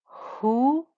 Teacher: this is the deep ha. It's not the breathy one